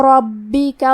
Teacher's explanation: کلمت ربکا میں با پہ تشدید ہے تو ہمیں 2 حرف کے برابر حرف البا کو پڑھنا ہے